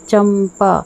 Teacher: तो आप देखेंगे कि यहाँ पर ये चंपा, आप यहाँ पर अनुस्वार का उच्चारण देखिए, म के कारण म का उच्चारण आ रहा है, चंपा। तो यहाँ पर जो आधा वर्ण प्रयोग होगा वो इस तरह से होता है, चंपा अनुस्वार की जगह।